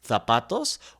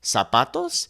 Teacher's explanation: in Spain, we would use the kind of the TH sound, zapatos, whereas in Latin America, we would simply make that S sound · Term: ceceo